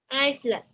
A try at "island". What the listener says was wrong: Leave out the S. Island.